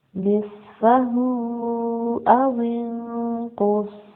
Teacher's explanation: سواد heavy letter ہے، اس کو پر پڑھیں گے، پلس وسلنگ لیٹر بھی ہے، پر پڑھیں گے اور سیٹی کی آواز کے ساتھ پڑھیں گے۔